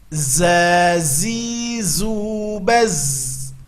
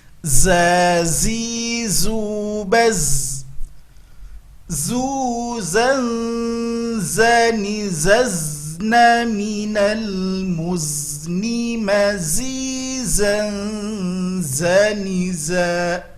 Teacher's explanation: Ujung lidah nempelnya ke gusi bawah dan kedua gigi ditautkan. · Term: huruf za